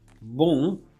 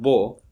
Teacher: the same sequence of sounds, with the nasal cavity open, which means with the velum lowered, you get a new vowel, and this vowel is a different vowel than this, and it creates contrast. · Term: nasal vowel